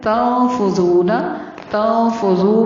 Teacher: تنفذون، تنفذو میں نون پر اخفا ہوگا. ذو کو تھوڑا سا لمبا کرنا ہے، نون کو لمبا نہیں کرنا